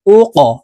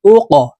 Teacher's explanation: কফ কলকলার হরফ উপরের দিকে ধাবিত করে ধাক্কা দিয়ে উচ্চারণ করব